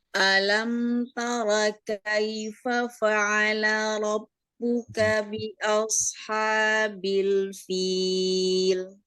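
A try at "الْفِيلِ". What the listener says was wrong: Nah, lamnya jangan ngilang, jangan fil, ngilang. Ya, fil itu rasakan itu memang dia nempel ke gusi atas, sisi lidahnya ya, tepi lidahnya.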